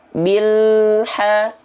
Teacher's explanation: panturan Bil alirkan sedikit El lalu masuk ke h-nya Bil ha jadi enggak ada e dia terus mengalir sedikit dan enggak ada pantulan di sana